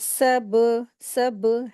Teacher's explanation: बा हुरूफ़ क़लक़ला है, इसको पढ़ते वक़्त आवाज़ थोड़ी-सी बाउंस होती है।